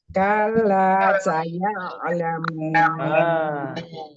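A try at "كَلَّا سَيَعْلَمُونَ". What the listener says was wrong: Saya ada a-nya. Nah, itu harus alon-alon ya, agak pelan-pelan. Ainnya jangan dipantulkan.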